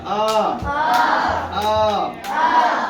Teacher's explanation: এই উচ্চারণটা করতে ঠোঁটটা গোল হবে না